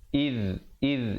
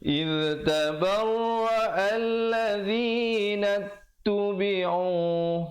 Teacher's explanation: Iz di hujung lidah. Iz tabarra'a alladzina tubi'u, nun baris atas terus naik di atas ta.